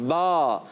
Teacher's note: جہاں سے حرف ادا ہوتا ہے تو یہ مخرج ہوتا ہے، یعنی ہم نے ادا کیا با، تو ہمارے دونوں ہونٹوں کا تر حصہ ملا تو با ادا ہو گیا